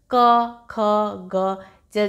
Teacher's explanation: टंग का पीछे वाला पोर्शन ऊपर पैलेट में टच हो रहा है